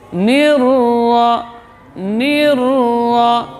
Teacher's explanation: Jadi nunnya juga jelas, tidak boleh cenderung ke ra.